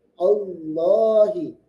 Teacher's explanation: huruf lam ini memiliki sifat inhiraf, yaitu menyimpang keluar udara atau suara dari kanan dan kiri.